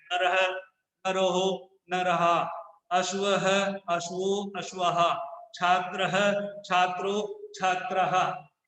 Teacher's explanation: विसर्ग का प्रयोग जब करते हैं तो हम उसको ह की ध्वनि के साथ उच्चारण करते हैं